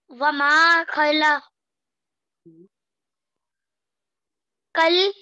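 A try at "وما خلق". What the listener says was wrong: कज लाम नहीं लाम पर तो कुछ नहीं है काफ जाल जबर कज वमा खला कज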